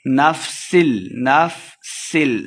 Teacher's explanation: سین پہ سیٹی کی آواز آئے گی، لام مشدد ہے تو اس سین کو لام کے ساتھ ملا کے پڑھیں گے۔